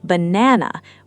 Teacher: But in natural native English, the middle syllable completely dominates the word, banana, while the first and last [music] syllables shrink dramatically, fading almost into silence, barely more than a breath.